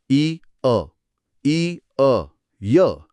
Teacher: जर आपण ई आणि अ सलग आणि वेगाने उच्चारले, ई अ, ई अ, य, बघा तोंडातून नैसर्गिकरित्या यचा उच्चार बाहेर पडतो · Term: यणादेश